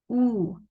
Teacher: So the dhamma, when you are reciting oo, the lips should be completely rounded